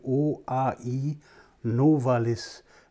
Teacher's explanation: das sind nur weiche Konsonanten kein harter Konsonant und drei Vokale die auch noch von dunkel nach hell aufsteigen